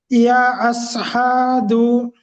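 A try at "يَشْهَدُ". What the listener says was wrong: টান দিচ্ছেন কেন? দরকার পড়ে বানান করবেন। টান দেবেন। ইয়াস হাদু। ইয়াস ইন জবর ইয়াস, হা জবর হা, ইয়াস হা, দাল পেশ দু, ইয়াস হাদু।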